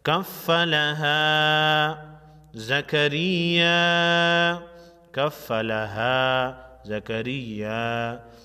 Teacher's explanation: الف مدہ ہے، خالی الف سے پہلے حرف پر زبر ہے. الف مدہ کو ایک الف کے مقدار یعنی 1 سیکنڈ لمبا کریں گے